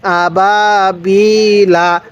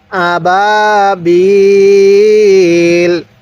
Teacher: ওয়াকফের সময় এই বায়ের মধ্যে আমরা 3 আলিফ টান দিব।